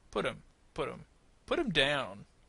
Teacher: Notice we cut the H in this example. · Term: disappearing H